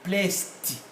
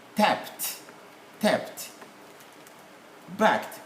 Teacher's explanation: So for instance here, we shall say placed, T, not D, placed.